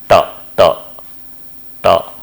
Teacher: they are produced by providing a constriction at the retroflex